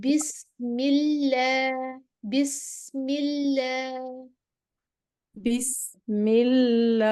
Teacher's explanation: अल्लाह का लाम बारीक पढ़ना है, अल्लाह के लाम से पहले जेर आएगी तो ये बारीक होगी